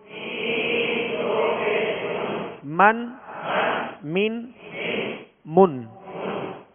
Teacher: میم کا جو مخرج ہے وہ دونوں ہونٹوں کے خشک حصے سے ادا ہوتا ہے